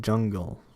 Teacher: voiced j, the first one in jungle